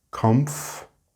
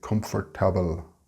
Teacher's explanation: Also note that the R is very soft, and in some accents it is completely silent altogether.